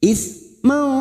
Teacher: Au ismau sa sukun bukan sin, t f a, ismau fathah tanwin bertemu sa, ikhfa hakiki kita samarkan bunyi fathah tanwin mendengung selama 2 atau 3 harakat